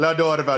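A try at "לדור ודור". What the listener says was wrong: It sounds like you're speaking Spanish. I think the la is throwing us off. I don't think that's a Hebrew word.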